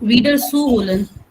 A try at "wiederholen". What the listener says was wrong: Wiederholen, zu wiederholen. Das ist nicht trennbar. Wiederholen. That's why I said stress on the second syllable. Wiederholen. Not wiederholen. Das ist ein nicht trennbares Verb. Wiederholen. So, zu wiederholen.